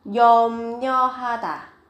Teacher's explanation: viết ở đây là ryo nhưng mà khi phát âm thì các bạn đọc là nyo